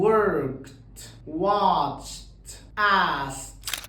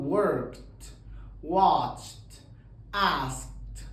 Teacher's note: فلو اخر صوت بقى فويسلس وضفنا الاي دي، في الحاله دي برضو بحذف الاي، ما بنطقهاش اطلاقا، بكتبها بس. بقلب الدي اخليها تي